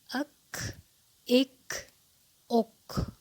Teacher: اس کی ادائیگی میں ساکن کرنے کی صورت میں ہمس محسوس ہو رہا ہے